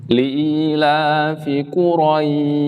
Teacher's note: Huruf shin yang akan kita baca, kita fokuskan ini adalah hasil pertemuan antara tengah lidah dengan langit-langit. Namanya wasatul lisan ya.